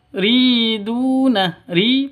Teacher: panjang dua ketukan karena ada ya mati diawali dengan kasrh ya ya mati diawali dengan kasrh panjang dua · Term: Mad asli, mad asli